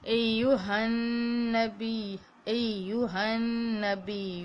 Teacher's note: ہن اس کے اوپر غنہ ہے. غنہ کیا ہے کہ دو حرکات لمبا کرنا ہوتا ہے